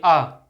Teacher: आ को दीर्घ करेंगे तो वही जीभ आपकी पीछे चली जाएगी। आ थोड़ी सी पीछे गई अ बीच में।